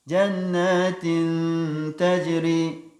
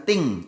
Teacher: Jannatin tajri, bukan ting, bukan berubah menjadi eng.